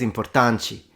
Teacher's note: the t is pronounced like a CH